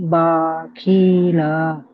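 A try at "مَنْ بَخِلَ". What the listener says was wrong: টান হয়ে যাচ্ছে, আপনি এটি মস করেন, মিউট করে নিয়ে মস করে নেন। মান হবে না আমার সোনা ভাই, মাম হবে। মাম মাম মান নয় আমার সোনা ভাই, মাম মাম।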